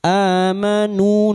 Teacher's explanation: nu diikuti oleh sukun wau diperpanjang untuk dua harakat, mad thabi'i